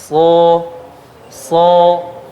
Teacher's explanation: Ketika mengucapkan huruf shad dari ujung lidah, pangkal lidah terangkat. So, ya, terkumpul dan naik karena shad ada sifat itbaqnya, nanti akan kita bahas ya. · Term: isti'la